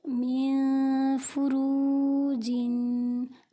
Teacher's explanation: میم نون زیر مین، فا پیش فو مین فو، را واو پیش رو مین فرو، جیم دو زیر جن مین فرو جن۔ نون ساکن کے بعد فا حروف اخفا میں سے ہے، یہاں اخفا کا قاعدہ ہو رہا ہے، یعنی نون کو غنہ کر کے پڑھیں گے